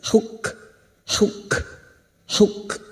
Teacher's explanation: kaf sukun yang memiliki sifat syiddah dan hamas